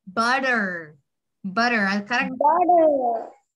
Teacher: So the word butter. It has T in it, but since it's surrounded by U and E, you have to make the D sound.